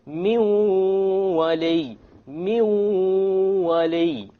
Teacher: we drop the noon because the waw is of the letters of idgham with ghunna.